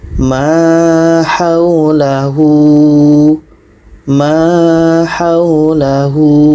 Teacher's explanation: keduanya dibaca dengan panjang dua harakat bagi kita yang baru belajar